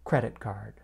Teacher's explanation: We stress the first word, credit.